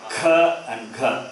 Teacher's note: Number 2 and 4, kha and gha, they are mahaprana.